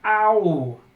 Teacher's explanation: Now you don't have to think long to realize that's two sounds. That's ah and oo. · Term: dipthongs